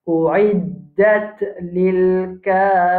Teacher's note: Règlement de tarqiq parce que ra est à kasra. Alors nous pouvons dire kafirin.